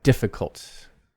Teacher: main stress is on the first syllable